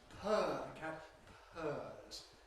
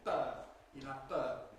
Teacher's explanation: The English consonant at the beginning, the English /p/ sound, is followed by aspiration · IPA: [pʰɜː]